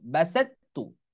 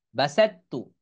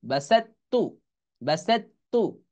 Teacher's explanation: এই ত উচ্চারণে আসবে না, কারণ এটা একই মাখরাজ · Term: ইদগামে মুতাজানিসাইনের